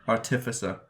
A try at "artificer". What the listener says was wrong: Artificer. It's putting the wrong emphasis on the wrong syllable. Artificer. Artificer.